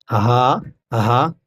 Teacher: ہا شروع حلق سے پڑھا جائے گا